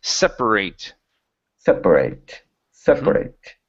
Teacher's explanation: instead of separate, putting the stress on the end, the stress is at the very beginning.